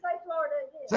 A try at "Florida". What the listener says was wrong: You put an extra R in there somewhere. Say Florida again.